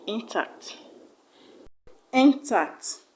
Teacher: Just because it's not a noun, it will not have a stress on the first syllable, but on the second syllable